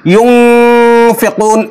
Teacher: বলে ইউনফিকুন, নাকের মধ্যে চেপে ধরে অনুস্বর উচ্চারণ করে ফেলে, ইউনফিকুন এভাবে। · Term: ইখফার ভুল উচ্চারণ